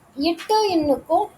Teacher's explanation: இட்டு இன்னுக்கும் நாவோட நுனியும் அன்னத்தோட நுனியும் இணைவதால் வந்து தோன்றுது.